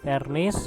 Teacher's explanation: ST sounds the same, and also V, but people in Indonesia pronounce the letter V like the letter F